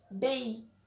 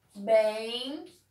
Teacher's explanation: A palavra é bem, mas na hora de falar, a gente fala bem, ou seja, um E nasal e acaba saindo um I pela culatra aí junto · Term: Ditongo nasal